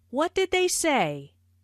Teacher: notice how say is emphasized but the intonation Falls at the end of the word